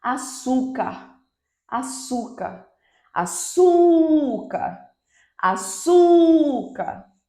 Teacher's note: Então, penúltima sílaba é a mais forte, é a sílaba tônica, então esta é uma palavra paroxítona.